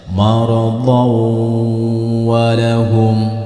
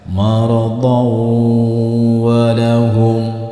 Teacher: Contoh didengungkan jika diteruskan, ini ya cara bacanya maradhaw walahum. Jadi fathah tain di sini dimasukkan atau dileburkan ke dalam huruf wawu serta tidak boleh disentak dan ditahan beberapa detik atau 2 ketukan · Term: idgham bi gunnah